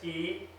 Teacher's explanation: our English T is always aspirated. In other words, we say it with a lot of breath, T. So if you go Om Tare Tu Swaha with a lot of breath, it makes you tired more quickly and you run out of breath.